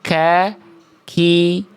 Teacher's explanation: untuk kaf, makhraj adalah pangkal lidah yang menyentuh bagian antara langit-langit lunak dan langit-langit keras